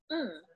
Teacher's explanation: the nose um is the first sound we will talk about it is called a bilabial nasal as both lips are closed for its articulation as air escapes through the nose it is also voiced remember